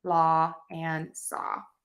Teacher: the word law and saw we don't pronounce that last W